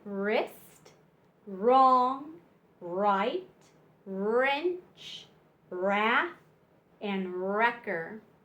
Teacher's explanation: with this special sound you don't hear the W you just hear R